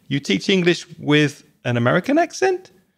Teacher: that's not actually a question even though you raise your voice at the end with intonation